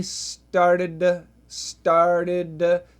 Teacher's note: so we have a flap T here